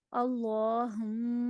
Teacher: اللہما میں اللہ کو پر پڑھنا ہے